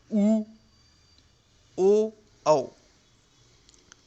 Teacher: पहला होता है वृत्तमुखी स्वर, दूसरा आवृत्तमुखी स्वर। वृत्तमुखी स्वर ऐसे स्वर जिनके उच्चारण में ओठों की स्थिति गोलाकार हो जाती है